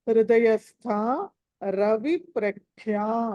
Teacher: హృదయస్థ కి దీర్ఘం ఉంది, అది మహాప్రాణం కూడా. హృదయస్థ రవి ప్రఖ్యా మళ్ళీ మహాప్రాణం.